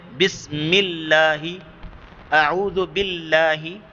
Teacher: جب لفظ اللہ سے پیچھے زیر ہو، جیسے بسم اللہ، اعوذ باللہ، یہ باریک ہوگا کیونکہ زیر ہے نا لفظ اللہ سے پیچھے.